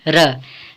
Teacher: लुंठित या प्रकंपित व्यंजन, जिह्वा 2-3 बार कंपन करे, ऐसे व्यंजन को लुंठित या प्रकंपित व्यंजन कहते हैं, जैसे र। र लुंठित व्यंजन है।